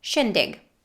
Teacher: there's no ing ending. It's just the schwa plus a g sound.